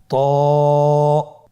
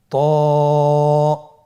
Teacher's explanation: এটা উচ্চারণের সময় অবশ্যই মোটা করতে হবে এবং উচ্চারণ করার সময় এক আলিফ টেনে পড়তে হবে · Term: মোটা হরফ